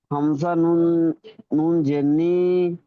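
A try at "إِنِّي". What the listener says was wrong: এখানে হামজার হামজার উচ্চারণটা আপনার আসছে না হামজার উচ্চারণটা আসছে না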